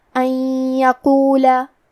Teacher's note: کلمت یقولہ میں حرف القاف کو موٹی آواز میں پڑھنا ہے۔